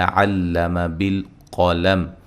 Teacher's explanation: قاف کو موٹا ادا کریں گے اور میم ساکن ہو جائے گی وقف کی صورت میں